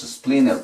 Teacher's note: Aquí nos tragamos la T, decimos splinter, para astilla.